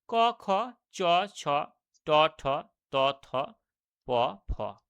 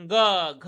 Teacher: প্রতিটি বর্গের তৃতীয় এবং চতুর্থ বর্ণগুলো যখন আমরা উচ্চারণ করছি, যেমন গ, ঘ, দেখুন গাম্ভীর্যপূর্ণ আওয়াজ হচ্ছে, তার জন্য এগুলো হচ্ছে ঘোষ ব্যঞ্জন ধ্বনি।